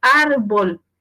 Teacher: Porque su sílaba tónica es la penúltima, ar. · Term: palabra también grave